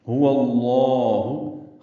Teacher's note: ہو اللہ میں ہا اقصی حلق سے ادا کریں گے، واو کو لام اسم جلالہ سے ملائیں گے، لام اسم جلالہ کو پر پڑھیں گے، 2 حرکات لمبا کریں گے۔